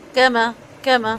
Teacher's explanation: کاف میم سا تینوں نرمی کے ساتھ، لائٹ لیٹرز ہیں یہ، ان کو موٹا کر کے نہیں پڑھنا